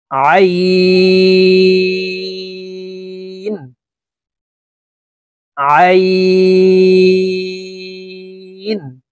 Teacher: আইন হরফ হালকের মধ্যখান থেকে চাপ দিয়ে উচ্চারণ করব